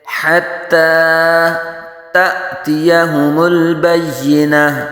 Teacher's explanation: زبر قائم مقام الف مدہ، ایک الف تک کھینچیں گے